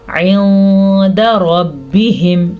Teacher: نون ساکن کے بعد دال حروف اخفا میں سے آیا ہوا ہے تو ہم نون ساکن کی آواز کو چھپانے کے ساتھ ساتھ غنہ کر کے بھی پڑھیں گے. عند ربہم را کو پر پڑھیں گے کیونکہ را کے اوپر زبر ہے